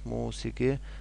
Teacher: musiqi sözündə isə uzanma birinci hecada özünü göstərir, musiqi, lakin vurğu sonuncu, üçüncü hecadadır.